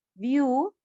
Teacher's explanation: व आधे के साथ यू पूरा बड़ी मात्रा है लंबा खींचना है